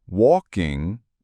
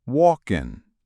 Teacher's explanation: Walking becomes walkin', dropping the G.